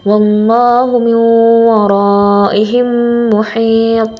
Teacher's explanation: cara membacanya adalah seperti menyuarakan mim rangkap atau ditasdidkan dan wajib dibaca dengung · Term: idgham mithlen